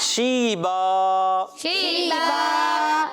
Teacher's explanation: اور جب اس پر وقف کریں گے تو اب اس کا الف کو ہم پڑھیں گے, کیونکہ دو زبر کی تنوین کو الف سے بدل کر پڑھتے ہیں